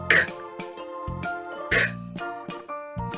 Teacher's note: So like I mentioned before, your mouth needs to be open, your tongue flat, and this sound should come from the back of your mouth and push forward.